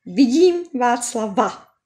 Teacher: Aber im Satz, vidím Václava, ist am Ende schon ein Vokal. So sprechen wir normal ein stimmhaftes W aus.